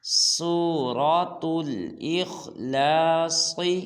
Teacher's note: اخ میں خا کو موٹا کرنا اور لاص میں صاد کو موٹا کرنا ہے